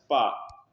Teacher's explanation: पा ओष्ठ भी है, स्पर्श व्यंजन भी है, अल्पप्राण है और अघोष है।